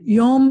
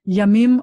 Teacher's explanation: when something goes from the singular to the plural that the vowel gets shorter